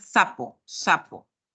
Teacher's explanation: la lengua está más Arribita en el alveolo no está entre los dientes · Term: alveolar fricativo